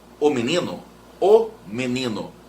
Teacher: você fala tão depressa que ele parece que prega na outra palavra na o menino o menino parece que ele fica junto eles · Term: monossílabos átonos